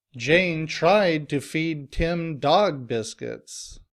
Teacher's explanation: Now here the stress is on tried and dog.